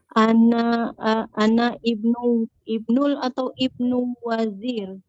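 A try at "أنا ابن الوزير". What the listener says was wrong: Bacanya gini langsung. Anabnul waziri gitu. Jadi kalau dia di depan, hamzahnya dibaca gitu. Tapi kalau ini enggak, anabnul waziri. Walaupun bisa dipahami kalau disebut ana ibnul waziri. Nah, ini ibnul bacanya.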